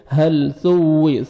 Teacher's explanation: ثا کو نرمی سے ادا کریں گے تاکہ سین میں ساؤنڈ مکس نہ ہو